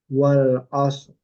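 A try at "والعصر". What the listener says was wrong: Roknya jangan sampai hilang.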